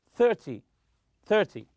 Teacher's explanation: in 10 numbers such as 20 and 30 always stress the first syllable third T 30 so stress the first syllable 30 30. another